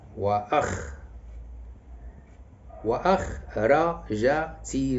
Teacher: النبر غادي يكون على الخاء